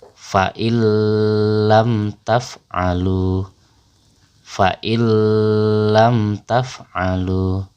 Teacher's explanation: huruf nun itu kita lebur bacaannya kepada huruf lam Nun nya hilang tapi lemnya menjadi double atau bertasydid file lam